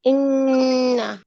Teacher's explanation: 17 number মাখরাজ নাকের বাশি থেকে গুন্না উচ্চারিত হয়